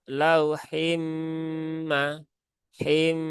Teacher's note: Ada gunahnya dia ditahan tiga harakat